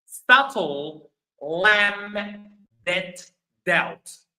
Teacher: in all of them the B is not pronounced the B is silent. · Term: silent B